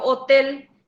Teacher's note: palabras agudas y llevan el acento en la última sílaba